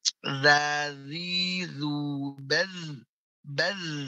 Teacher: Yang mengalir suaranya baz, tapi bukan nafas yang keluar, bukan baz, tapi baz. Ya, dia nafasnya tertahan, namun suaranya saja yang mengalir, sifat rokhwah. Zazizu baz, baz, bukan baz, tapi baz, ya, zazizu baz. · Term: huruf zal